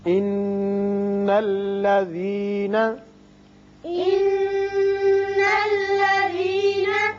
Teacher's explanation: نون مشدد حرف غنہ ہے یہاں غنہ کریں گے